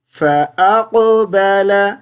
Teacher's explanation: قاف کو موٹی آواز سے پڑھیں گے، ٹھیک ہے، اور قلقلہ کریں گے